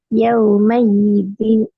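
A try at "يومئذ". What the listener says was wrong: பிழை. ஈ இல்ல. அதான் பிழை. இப்ப யாதான் வந்து எப்படியா ஈதீன் யாதான் உச்சரிக்கப்படுது. ஈதான். அப்ப அங்க யா வந்து அப்படி வரும். ரெண்டு ஒரே மாதிரி உச்சரிப்பு வருது. பிழையே.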